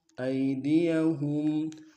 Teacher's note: وَيَكُفُّوا أَيْدِيَهُمْ، ای میں یا الی نے بغیر کھینچے پڑیں گے، ہم میں میم ساکن غنہ کریں گے